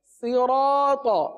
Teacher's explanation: اس الف کو بھی پر پڑھیں گے کیونکہ الف سے پہلے والا حرف را پر ہے، لہذا الف کو پر پڑھیں گے۔